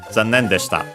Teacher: the usual accent of zannen, low, high, high, low. And then everything else also low, the desta.